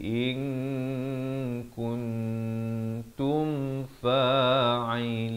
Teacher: Kemudian tum izhar syafawi, jangan dipanjangkan dua harakat di sini. Di sini sempurnakan saja bunyi mim mati · Asalnya hamzah baris bawah bertemu nun bunyi in, tapi datang kaf disamarkan, dua harakat. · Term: ikhfa